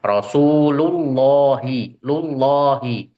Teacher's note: Ini lam yang dibaca tebal ketika huruf sebelumnya itu fathah atau dhammah.